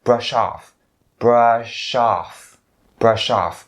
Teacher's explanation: if you have the word off, then you can link the sh sound to off.